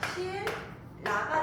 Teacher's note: 말 그대로 유음을 만나서 유음이 되는 거야